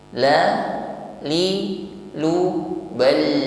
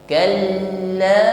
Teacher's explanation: huruf lam tasydid, maka tampak sifat yang menyertainya yaitu tawassut, ya lunak saja. Jarayanul juz'i lis saut, jadi mengalirnya sebagian suara.